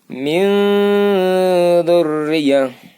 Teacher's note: ujung lidah itu bisa sedikit gigit seri, terus rapat, tempel. Baru akan terdengar tipis.